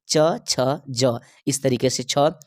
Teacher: तालु से जो है छ वर्ण का उच्चारण होता है